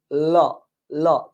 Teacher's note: মুখের ভেতরে এই বাতাসটা যখন জিহ্বাটা এখানে পড়ে তখন কোথায় যায়? জিহ্বার দুই পার্শ্ব দিয়ে বের হয়ে যায়। · জিহ্বার দুই পার্শ্ব দিয়ে মুখ থেকে বের হয়ে যায় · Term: পার্ষিক ধ্বনি, পার্শ্বিক ধ্বনি